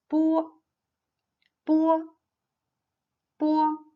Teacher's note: This is an unaspirated voiceless bilabial plosive. Long air is compressed by the closure of the lips.